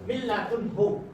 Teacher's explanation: cara bacanya dimasukkan tapi tidak boleh didengungkan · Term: Idgham bila gunnah